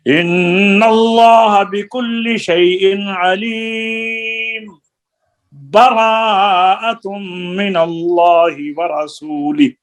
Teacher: मीम को साकिन करके यहाँ पर 2 हरकतों के बराबर सख्ता करना है, सांस नहीं तोड़ना, आवाज बंद करके फिर बरा पढ़ना है।